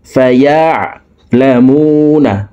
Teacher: মু একালিফ টান, ঠোঁট গোল করে একালিফ টানি পড়তে হবে, কারণ পেশের বাম পাশে জজমওয়ালা ওয়াও মদের হরফ, ডান দিকের হরকতকে এক আলিফ টানিয়া পড়িতে হয়।